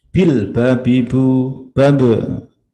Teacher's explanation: Ba makhrajnya di mana? Dua bibir atas dan bawah.